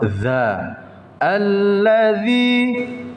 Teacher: bukan da tapi za, lidah maju sedikit hams. Alladzina yu'minuna bil ghaibi wa yuqimunas shalah.